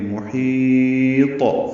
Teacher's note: میں ہا وسط الگ سے ادا کرتے ہوئے لمبا کریں گے، اور طا ساکن کریں گے تو قلقلہ کریں گے